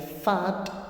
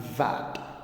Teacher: Now the sound f, it is voiceless, and the sound v, it is voiced.